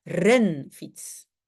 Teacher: l'accent tonique ne va jamais être sur le deuxième mot fiets